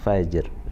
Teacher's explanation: Matikan huruf ja, bunyi huruf qalqalahnya j, kemudian diikuti dengan huruf ra dengan suara yang rendah.